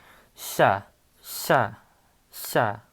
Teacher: You have the sh to like sa. It's going to be like a sh with the lisps, like sha, sha, sha.